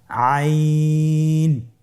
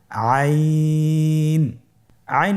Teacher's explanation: আইন হরফটি উচ্চারণের সময় অবশ্যই তিন আলিফ টেনে পড়তে হবে